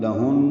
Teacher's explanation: لہن یہ نون مشدد پہ غنہ ہوگا